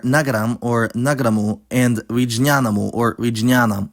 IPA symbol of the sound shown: ɐʋ̃